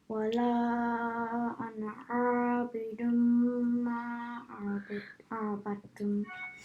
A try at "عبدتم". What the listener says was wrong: Make the shad on the ta a bit clear. عبدتم.